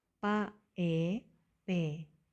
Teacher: The first syllable combines the consonant ba with the vowel a, which has a low tone. To pronounce a correctly, remember to lower your tone.